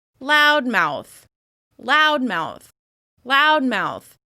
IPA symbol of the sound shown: aʊ